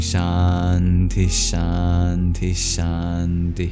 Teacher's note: If a Visarga is placed before a sibilant, like the palatal sibilant SH, then it actually takes on the sound of the sibilant. · the H at the end of Shanti, that's a breath expulsion known as a Visarga · So you'll hear just an extra long SH of Shanti